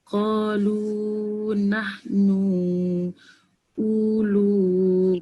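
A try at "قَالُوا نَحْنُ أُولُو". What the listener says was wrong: Kalau u tu tak payah panjang, pasal waw dia ada bulat tu tak payah panjang. Ulu aja. Tak panjang ulunya. Wa ulu gitu.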